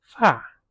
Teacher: If it's pronounced with the fourth tone, fa, it means hair.